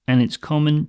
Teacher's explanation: the D in and can get dropped